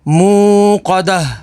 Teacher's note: دال زبر دا، مو قدا، تا پیش تو، مو قدتو، آگے وقف، مو قدہ، وقف تام کی وجہ سے گول تا کو ہا ساکن میں بدل دیں گے